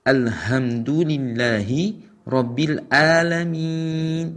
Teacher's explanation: Seharusnya dia menggunakan ha ketika membaca alhamdu, tapi dia menggunakan huruf ha yang mengambil dari al-halaq, tenggorokan bagian bawah, maka artinya berubah menjadi segala kehancuran.